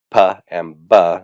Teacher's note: And then labials have to do with lips, and labials are formed by the lips coming together.